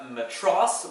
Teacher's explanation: So here you have matros with the aw sound. It's the open vowel.